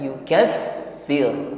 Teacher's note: baknya bertasydid, maka sifat hamas atau hembusan nafasnya nampak lebih jelas karena ditekan oleh tasydid itu